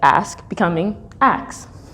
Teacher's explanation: the SK sound becomes a KS sound in words like ask becoming ax